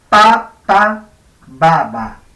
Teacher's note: se diferencian en que la P es sorda y la B es sonora.